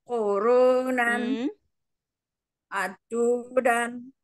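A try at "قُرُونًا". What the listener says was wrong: Bukan ku. Kofnya gimana kof? Urunan.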